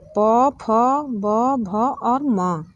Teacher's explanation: यानी कि इसका उच्चारण ओष्ठ के स्पर्श से होता है। यानी कि ओठ दोनों हमारे जब मिलते हैं तो यहाँ पे प, फ और ब, भ, म का उच्चारण होता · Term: प वर्ग